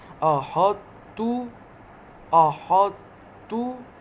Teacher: تو موٹا حرف ہے اس لیے اس کو موٹا کر رہے ہیں۔ احط تو، تا کو موٹا نہیں کرنا، تو کو موٹا کرنا ہے۔